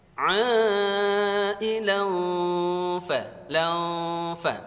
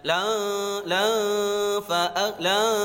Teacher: Ailan fa, jangan la fa la. Jadi cara bacanya dengungnya siap-siap ke makhrajnya fa.